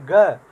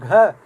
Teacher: जब हम बोलेंगे ग, जब हम बोलेंगे घ, तो आप बोल कर देखिए तो आपको लगेगा कि स्वर तंत्रियों में ज़्यादा नाद उत्पन्न हो रहा है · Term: सघोष